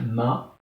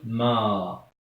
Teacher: Quand je trouve ma, par exemple, avec fatha, ce que je vais dire ma, avec l'alif, je vais dire ma, je vais allonger. Donc là, c'est une voyelle longue.